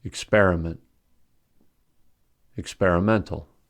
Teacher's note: experimental has primary stress on the fourth syllable and secondary stress on the second syllable since experiment has stress on the second syllable